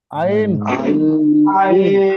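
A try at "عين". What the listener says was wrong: আইন না ভাই, একটুখানি টান দিয়ে বলেন আইন।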